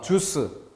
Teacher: 그런데 지읒은 센 소리였고 지읒이 세기 때문에 나머지 우와 유가 온전히 구별될 수 없다.